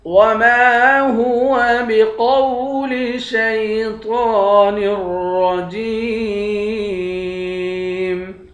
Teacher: وَمَا هُوَ، میم کے بعد الف ہے، الف حروف مدہ ہے، ایک الف کے مقدار کھینچیں گے۔ قاف کو واو کے ساتھ ملا کر قاف کو موٹا پڑھیں گے، طا کو ایک الف کی مقدار کھینچیں گے، طا کو موٹا پڑھیں گے۔